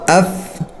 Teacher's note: फा निकालने का तरीका यह है कि ऊपर के दांत नीचे के होठ को लगे ठीक है और ऐसे फा निकाले दोनों होठों से ना निकाले